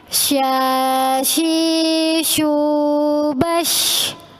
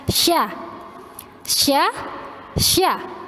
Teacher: sya itu dilafazkan dengan mempertemukan lidah bagian tengah dengan langit-langit atas. Jadi sya, jadi lidah bagian tengah. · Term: huruf sya